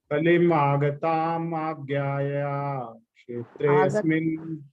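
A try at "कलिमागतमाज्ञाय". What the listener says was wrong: Agatam is not there. Agatam.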